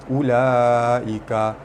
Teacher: huruf mad bertemu dengan hamzah dalam 1 patah perkataan, hukumnya mad wajib mutasil dibaca panjang 5 harakat